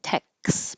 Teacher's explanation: your tongue goes to the K position, tex before the S. You don't release it and take a big pause, tex, but tex. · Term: the KS sound